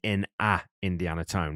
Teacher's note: he drags that vowel, that a vowel out so that it actually fits into that next vowel